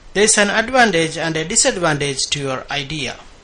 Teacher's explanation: what's called contrast of stress when you present two different ideas the first idea has Rising tone and the second one has falling tone